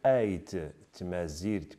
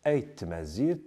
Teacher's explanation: Il peut donc concerner des consonnes qui sont identiques, comme dans ces exemples ait, tmazirt, qui se prononce ait tmazirt, donc les deux T, le T final et le T initial de tamazirt, se confondent pour constituer un seul phonème qui est géminé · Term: assimilation totale